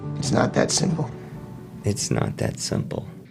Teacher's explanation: Rhode Islanders, the tip of the tongue is more forward. So the articulation is on the back of the teeth.